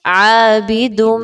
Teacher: کیسے ہوگا ادغام؟ آپ نے تنوین کی آواز کو میم کی آواز میں مکس کرنا ہے، مرج کرنا ہے، ود غنہ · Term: ادغام ود غنہ